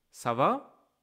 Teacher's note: Usually you can notice that there are questions because the tone of the voice goes slightly up, slightly high at the end of the sentence